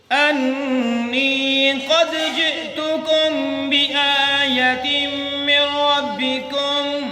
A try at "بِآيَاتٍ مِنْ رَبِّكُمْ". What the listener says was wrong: या को नहीं लंबा करना, सिर्फ आ को लंबा करना है। बिआयतिन मिर रब्बिकुम।